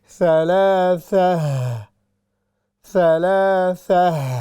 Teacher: جب بھی ہم اس تا پر سٹاپ کریں گے تو یہ ہا کی شکل بن جائے گی، اس کی جو آواز ہے وہ بھی ہا والی ہوگی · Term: تائے مربوطہ